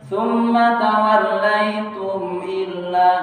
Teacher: tidak ada panjang, tidak ada dengung, ya idhar syafawi jelas.